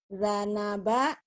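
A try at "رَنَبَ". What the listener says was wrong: Jangan za tapi ra ya.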